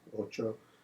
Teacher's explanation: KT has textbook examples in Romance where the treatment of the cluster in Spanish is a ch